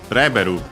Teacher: Reberu level in from English, accented just like in English, on the re.